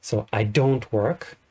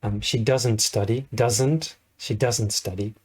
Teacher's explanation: She doesn't study, doesn't is stressed